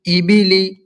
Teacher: زیر کی حرکت کو جلدی پڑھیں، تھوڑا بھی نہ کھینچیں، معروف پڑھیں، زیر کی آواز نیچے کو جاتی ہے، جیسے حمزہ زیر ای، با زیر بی، ای بی، لام زیر لی، ای بی لی۔